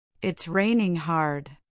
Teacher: Notice the firmness on the word hard.